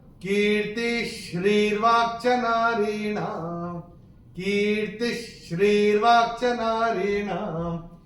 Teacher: तीसरे चरण में त के बाद जो ये विसर्ग आ रहा है उसके बाद का अक्षर है श्री, और श्र जो होता है, ये जो श्र होता है इसका कंस्ट्रक्ट होता है श प्लस र। चूंकि ये श आ रहा है तो ये जो विसर्ग है इसका उच्चारण होगा आधा श